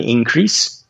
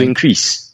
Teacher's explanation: Substantivo com a sílaba inicial, com a tônica, e a sílaba final para o verbo.